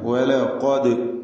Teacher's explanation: ഖാഫിന് തഫ്ഹീം നൽകണം. ഇസ്തിഅലാന്റെ ഹർഫാണ്, ദാലിന് ചേർത്ത് വായിക്കുക ആയതുകൊണ്ട് ഖൽഖല സുഗ്ര നൽകി ശബ്ദം ഹർക്കത്ത് പോലെ ചലിപ്പിക്കണം.